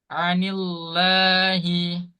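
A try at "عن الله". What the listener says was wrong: Itu masih tebal. Anillah, anillah, anillahi.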